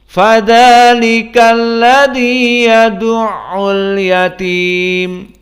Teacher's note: Maka semuanya flat. Di saat dibaca pun kita rasakan tidak ada tafkhim, tidak ada yang kental di mulut, tidak ada yang berat di mulut. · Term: muraqqaqah